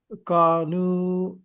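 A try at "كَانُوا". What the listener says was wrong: কাতে একটা আলিফ আছে, কানু।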